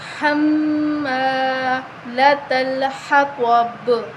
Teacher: با پہ قلقلہ کریں گے، تو کو موٹا پڑھیں گے، حروف مستعلیہ ہے